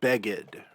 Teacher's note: then we have beggad remember this little arrow here indicates that the accent is on the second to last syllable rather than the final syllable